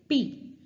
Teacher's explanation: when we are saying P, the lips are getting fully closed